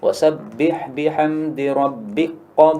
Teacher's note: Kafnya hilang nggih. Jadi langsung setelah ba itu makhrajnya makhraj qaf. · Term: idgham